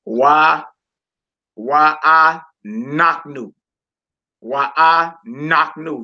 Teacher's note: I'm putting the emphasis on the knock part because that lesser than symbol was above the noon.